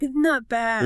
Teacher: Lower the pitch. Slow it down. Drag it out.